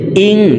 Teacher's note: হামজা নুন জের ইং নাকের ভিতরে লুকাইয়া গুন্নার সহিত পড়তে হবে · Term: ইকফা গুন্না